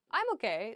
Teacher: it's like sort of upward intonation